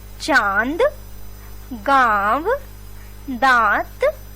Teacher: इसे हम चंद्र बिंदु के द्वारा प्रदर्शित करते हैं और इसे भी हम वर्ण के ऊपर लगाते हैं। इसके उच्चारण में नाक और गले दोनों का प्रयोग होता है, जैसे चांद, गांव, दांत आदि। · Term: अनुनासिक